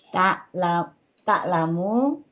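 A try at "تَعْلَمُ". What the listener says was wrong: mu-nya pendek ya, Bu. pendek.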